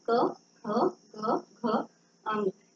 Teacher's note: ये बोलते समय आपके कंठ का इस्तेमाल किया जा रहा है